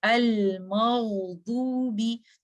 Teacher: अल मग़दूबी। तो आपको गईन के बाद जब आप दौ तक पहुंचते हैं आपको कोई गैप फील नहीं होता। आपके गईन की जो आवाज है उस लेटर की तब तक रन करता है जब तक आप दौद पर नहीं पहुंच जाते। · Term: रखावा